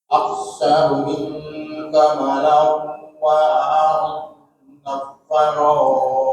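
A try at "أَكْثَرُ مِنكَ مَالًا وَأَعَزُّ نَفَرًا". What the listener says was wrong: Ma ada alifnya, ma panjangin. Mala ada alifnya. Aktsaru minka malan. Wa a'azzu nafara.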